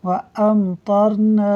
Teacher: میم ساکن کے بعد طا حرف با اور میم کے علاوہ ہے، لہٰذا اظہار شفوی ہوگا، یعنی غنہ نہیں کریں